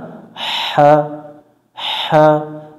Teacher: লম্বা হা হলকের মধ্য থেকে শোষ করে পড়তে হয়।